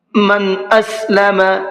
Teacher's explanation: نون ساکن کے بعد میں حمزہ آ رہا ہے اور حمزہ اظہار کے حرفوں میں سے ہے، اس لیے نون کی آواز کو ظاہر کر کے پڑھیں گے